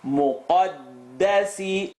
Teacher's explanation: Muqaddasi, qaf heavy, dal light. Muqaddasi, behind the uvula, behind the teeth.